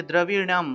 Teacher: দ্রবীণম ঠিক আছে দ্রবীণম মূর্ধন্য আছে মূর্ধন্য উচ্চারণটা হলো ন অর্থাৎ জিউভা উল্টিয়ে মূর্ধা দিয়ে আসলে মূর্ধা এর সাহায্যে ন উচ্চারণ করতে হবে